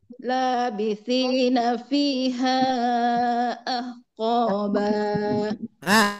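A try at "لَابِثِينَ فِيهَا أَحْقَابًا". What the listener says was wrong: Tidak turun Bu, datar. Labithina fiha ahqaba.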